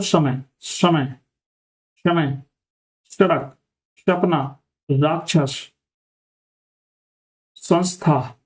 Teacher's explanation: इसका जो हम उच्चारण करते हैं तो जीभ दांतों के साथ रखकर बोला जाता है, ठीक है, और ध्वनि जो होती है वो साफ और सीधी होती है